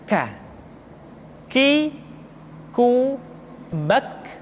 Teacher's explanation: Selanjutnya huruf K diucapkan dengan mengangkat pangkal lidah kita ke posisi di depan huruf Qaf.